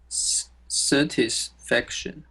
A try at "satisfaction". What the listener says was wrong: it's sa, no, sa for short A, which should be pronounced as a, then tis. Yes, another short A, satisfaction.